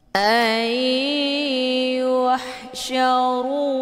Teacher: cara bacanya nunnya dileburkan ke dalam huruf ya ataupun dimasukkan dengan cara ditekan kemudian ditahan lebih kurang dua kali ketukan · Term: idamunah